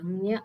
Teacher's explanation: ಗುರುತಿಸಿದ್ದಾರೆ ಇವುಗಳು ಪಾಲವ್ಯಕ್ಕೂ ಬರುತ್ತೆ ನ್ಯ ಅನ್ನುವಂತದ್ದು ಅದರ ಜೊತೆಗೆ ಅದಕ್ಕೆ ನಾಸಿಕವು ಬೇಕು ಬರಿ ನ್ಯ ಹೇಳಬೇಕಂದ್ರೆ ತಾಲವ್ಯ ಮಾತ್ರ ಸಾಕಾಗಲ್ಲ ನಾಸಿಕದ ಸಹಾಯ ಮೂಗಿನ ಸಹಾಯವು ಬೇಕು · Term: ಅನುನಾಸಿಕ ವರ್ಣಗಳು, ಞ